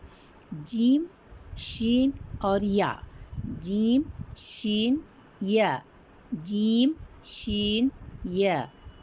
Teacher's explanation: زبان کا درمیان اور تالو کے ملنے سے